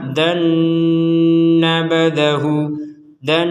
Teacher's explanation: jadi di rongga hidung kita itu berdengung, barulah setelah itu melanjutkan. Kalau belum berdengung ya nggak boleh, walaupun panjang.